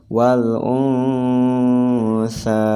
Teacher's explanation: ada ikhfa, nun mati bertemu dengan sa. Maka harus ditahan 3 harokat.